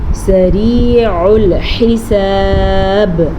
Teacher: را کو باریک پڑھیں گے، را کے نیچے زیر ہے